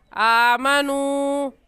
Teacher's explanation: واو ساکن سے پہلے پیش آ گیا تو واو مدہ، اور واو مدہ کو ایک الف کے برابر کھینچ کر پڑھتے ہیں